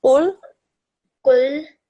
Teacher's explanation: Thick and heavy sound on the qaf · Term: thick and heavy qaf